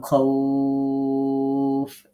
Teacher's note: লিনের হরফ দ্রুত পড়তে হয়, বাট আমাদেরকে মনে রাখতে হবে লিনের হরফের পরে যখন অক্ফ করব তখন এটাকে এক আলিফ, দুই আলিফ বা তিন আলিফ পরিমাণ টেনে পড়া যায়। সেক্ষেত্রে আমরা বলেছি আমরা আপনাদেরকে দুই আলিফ পরিমাণ টেনে পড়া শিখাবো ইনশাআল্লাহ।